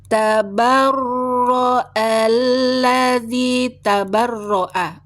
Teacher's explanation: roknya tasdid ya, lamnya tasdid tapi tidak boleh dengung